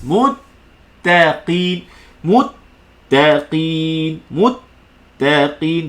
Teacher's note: Terus pergi makhraj ta, ta tu wajib baca nipis.